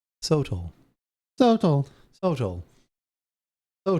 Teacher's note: the emphasis is on the so